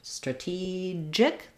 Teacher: So for strategic, we have second syllable stress. So the letter A is going to sound like a schwa. And then letter E is the tense E sound.